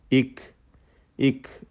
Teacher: ഇക്, ഇക് എന്ന് പറയുമ്പോൾ ആ ശ്വാസത്തിൻ്റെ കാറ്റിൻ്റെ ചലനം, അതാണ് ഹംസ് കൊണ്ട് ഉദ്ദേശിക്കുന്നത്